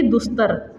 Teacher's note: फिर देखते हैं दुह प्लस तर। देखिए ता आता है दंत, इसका उच्चारण स्थान दंत है ता का, तो उसी हिसाब से विसर्ग बन जाएगा दंत सा में। तो दुह प्लस तर यानी कि दुस्तर।